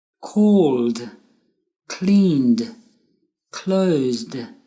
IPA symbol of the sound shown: d